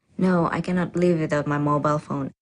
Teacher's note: the answer is definite, and this certainty is expressed with a flat or level tone